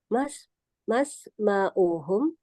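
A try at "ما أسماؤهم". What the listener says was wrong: Mas ma asma'uhum ya. nggak pakai mas ya. Itu maas hamzahnya dibaca ya. Ma asma'uhum.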